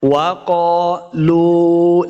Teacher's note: وَقَالُوا، اس قاف کو موٹا پڑھنا ہے، قاف کے آگے الف ہے، اس کو 2 حرکات لمع بھی کریں گے۔ وَقَالُوا، لام پیش، واو لو، واو مد ہے، اس کو 2 حرکات ہم نے لمع کرنا ہے